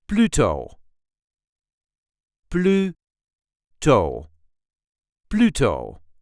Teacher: There is a light emphasis on the first syllable